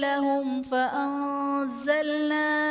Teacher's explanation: میم ساکن کے بعد حرف با اور میم کے علاوہ فا ہے تو یہاں پر اظہار شفوی کا قاعدہ ہوگا